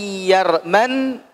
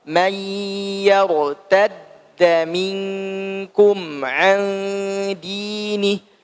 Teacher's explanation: man ini namanya idgham ma'al gunnah, ditahan 2 harokat